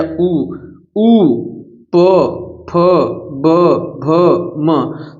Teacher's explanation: सब होठों का कमाल है इसमें अर्थात सब में होठ क्या हो रहे हैं स्पर्श हो रहे हैं तो इसलिए इनका उच्चारण स्थान क्या है ओस्ट ओस्ट मतलब होठ